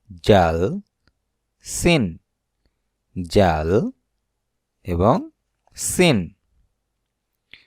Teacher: জিহ্বার আগা উপরের দাঁতের আগা এবং নিচের দাঁতের আগার সাথে মিশে উচ্চারণ হয়